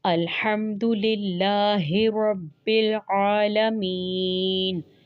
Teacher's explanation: ہا اور ہا اور عین، یہ تینوں حروف حلقی ہیں